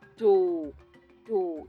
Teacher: do is the lowest tone marked by a downward facing accent it indicates that a syllable is pronounced with a low pitch